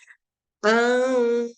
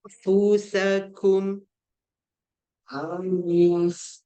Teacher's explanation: Ingat fa tu dia punya mahraj kena buat macam rabbit kan, gigi atas dengan bibir bawah kan.